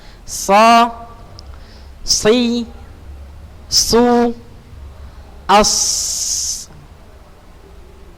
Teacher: Jadi sin, sha dan zai itu shafir, harus tajam suaranya dan harus tipis ya